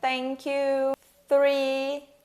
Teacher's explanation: E o som do TH, e o som desvozeado, que é como em thank you, three